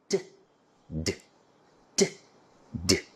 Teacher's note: The soft palate is raised, the nasal resonator shuts up. The air stream is blocked by rising the tongue to touch the alveolar ridge. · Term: alveolar plosives